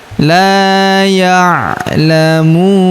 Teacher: huruf mu kita panjangkan 2 harokat karena waw sukun di depannya